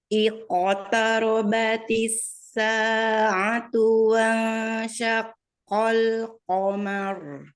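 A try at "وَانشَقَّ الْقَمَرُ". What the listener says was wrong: Belum, masih sakol, masih mendekati kaf. Naikkan sedikit, temukan dengan langit-langit yang lembut. Ya, masih harus latihan lagi ya, pengucapan makhraj qaf ya. Kurang naik sedikit.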